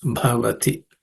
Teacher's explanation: letter in the class of consonant it has aspirated again bti it has to be aspirated okay uh with extra air and stress